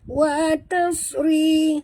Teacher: huruf ta jangan tebal, yang tebal sad. Wa tas bukan watas.